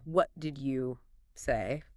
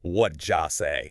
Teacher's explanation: It comes out sounding like, "What ja say?" >> The te and what gets soft. The did you becomes ja. It sounds like one word. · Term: connected speech